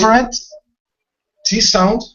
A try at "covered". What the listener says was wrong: No, D sound. Covered. Take out the E. We don't want to pronounce this E right here. It's only covered. Covered.